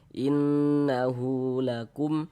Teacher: Ada huruf mim sukun, ini huruf mim ini tanda sukun mim sukun. Mim sukun yang tidak bertemu dengan huruf ba, tidak bertemu dengan huruf mim, hukumnya izhar syafawi. Baca jelas tak berdengung.